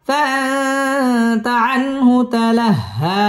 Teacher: ইজহার এখানে গুন্নাহ ছাড়া স্পষ্ট করে পড়তে হবে ফাআতা আনহু তালাহা হা তাসদীদ ওয়ালা হরফ এবং হা একালিফ টান দিয়ে এখানে ওয়াকফ করতে হবে